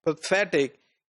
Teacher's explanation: if you look at this word pathetic in this word the first syllable which is unstressed syllable does not have the power